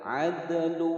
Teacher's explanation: Ad ada huruf dal berharokat sukun, hukum bacaan qalqalah sughra ya, dipantulkan.